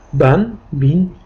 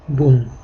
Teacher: b harfi endi tanvin bilan bu yerga kelganda ban bin deb o'qiladi